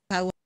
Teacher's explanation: all the way up to the top and back of the vowel space. Au.